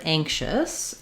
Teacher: the stress is on the first syllable, which means the ang syllable is going to be longer and it's going to have a clear vowel, and the chus syllable is going to be shorter and have a reduced vowel.